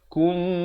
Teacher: Di sini mim mati bertemu mim. Idgham mislain. Dibacakan dengan dengung 2 harakat.